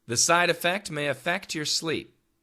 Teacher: the perfect pronunciation for most people would be affect, as in a short U. But once again, we typically use the schwa sound, effect. So effect and affect can sound the same.